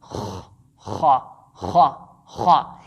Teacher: the top part of our throat like a scratching sound